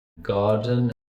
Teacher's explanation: We get this unpacking of syllabic N not only after T, but also after D